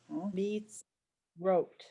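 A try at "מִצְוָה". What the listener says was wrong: No, it's not. A resh is wider. It's a vav. Meets. It's a V sound. Mitzvah. Mitzvah. Mitzvah.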